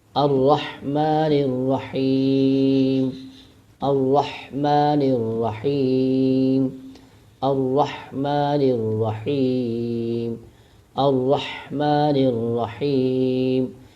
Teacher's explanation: اس کی وجہ یہ ہے را پر جب زبر ہو تو را موٹا پڑھا جاتا ہے، تو را پر شد بھی ہے، ذرا سختی سے پڑھیں گے، موٹا بھی کریں گے